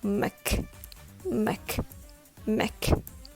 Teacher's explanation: It's muck with a very weak sound. Almost only the letter M and letter K sound.